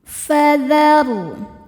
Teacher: ra sukun dibaca tafkhim karena sebelumnya baris fathah, maka bacanya tebal.